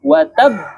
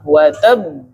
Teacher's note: Nah, ketika kita berhenti pada huruf qalqalah yang bertasydid, nah itu dia harus ditekan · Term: qalqalah akbar